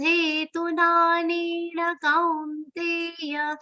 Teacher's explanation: Many long sounds in this charan. Tu is between two long sounds. You have to be careful here that this tu is remaining short.